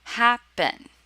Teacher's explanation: for happen the stress is on the first syllable